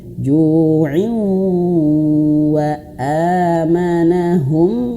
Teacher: Dan perhatikan di sini bagusnya Iqra wa Abah, di sini ju'i ya, kasrah tainnya di warna kelabu, artinya dia tidak dibaca, hanya dibaca i saja, bukan in, tapi i masuk ke huruf waw